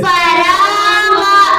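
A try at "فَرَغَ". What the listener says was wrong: देखो, रा को जबर होने की वजह से पुर पढ़ना बोला था। रा ठोस में है रदा तो हमेशा, लेकिन रा के ऊपर जबर या पेश आया तो पुर पढ़ेंगे, जेर आया तो यहाँ पुर पढ़ो, फरागा। एक चीज, दूसरी चीज ये गैब, गैब भी 7 हरफों में से एक है, नहीं है, इसलिए भी पुर पढ़ेंगे।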